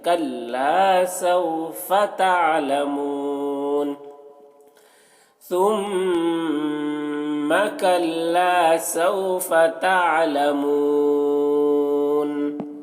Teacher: کاف کو باریک پڑھیں گے، لام کو کھینچیں گے، الف مدہ ہے